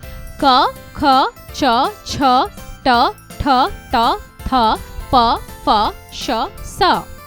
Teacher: फेफड़ों से निकलने वाली वायु स्वर तंत्री से टकराती हुई नहीं निकलती है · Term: अघोष व्यंजन